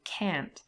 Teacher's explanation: the T is often lost anyway, there's elision here